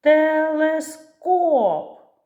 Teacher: наголос падає на останній третій склад